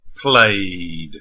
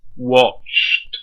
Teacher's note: When we add d and t, we just make the sound longer. We don't add a syllable.